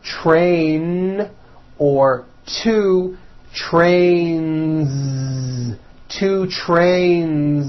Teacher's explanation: two train with a voiced Z ending